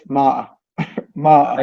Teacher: Yeah, the T and the R, both are gone.